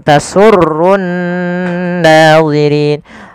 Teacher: Kemudian pada lafal rin, ri-nya dipanjangkan. Di sini boleh 2 harokat, boleh 4 harokat, dan boleh pula 6 harokat. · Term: mad arid lisukun